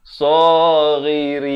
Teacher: Dan ra baris bawah jadi nipis. Jangan baca saghirin.